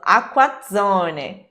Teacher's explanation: Nós temos então a palavra aqua, que tem as letras C, QUA, né, que é qua. Então a gente vai fazer aqua e zone com uma doppia consonante